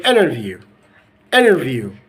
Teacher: never ever forget that to apply the a sound and to delete the T sound if it's followed by n